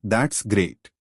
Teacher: is when the voice Rises and then Falls example that's great the pitch Rises on great and Falls after effect rise fall intonation is used to express strong emotions like · This is when the voice rises and then falls.